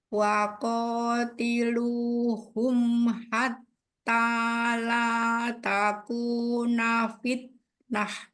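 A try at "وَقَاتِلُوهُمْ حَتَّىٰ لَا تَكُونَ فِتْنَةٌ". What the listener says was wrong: Nah, kan belum kedengeran nih keluar udaranya di huruf taknya.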